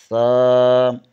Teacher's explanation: زبان کی نوک ثنائے علیہ کے سرے سے لگے تو سا ادا ہوتا ہے